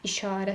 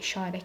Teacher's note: işarə sözü məsəl üçün orda a uzanır. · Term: səs uzanması